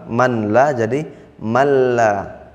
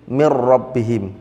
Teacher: Nun sukunnya dibaca masuk ke huruf setelahnya contohnya nun sukun bertemu lam Man la jadi malla nun sukun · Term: idgham